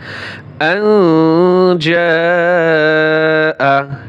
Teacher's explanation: নুন সাকিনের পরে জিম আসছে, এখন ইকফা গুণ্য হবে। · জিম আলিফ জবর জা, 4 আলিফ টান হবে।